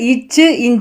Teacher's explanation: நாவின் இடைப்பகுதி நடு அன்னத்தின் இடைப்பகுதியை பொருந்துவதால் இச் இஞ்ச் வந்து பிறக்கின்றன